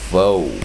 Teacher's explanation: 也 就 是 OL 加 TKD 的 时 候， 有 可 能 发 长 母 音， 比 如 说 boat、folk、toad 都 是 怎 样 boat、folk 还 是 什 么 toad 而 且 你 注 意 它 的 L 都 是 打 叉， 都 不 发 音 所 以 这 是 一 个 很 特 别 的 形 式 所 以 我 们 就 直 接 画， 这 个 叫 做 O 生 成 长 母 音 且 L 不 发 音